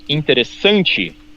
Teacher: The American will say is interessante in Portuguese. And you guys often stress the second to the last, a penúltima, the second to the last syllable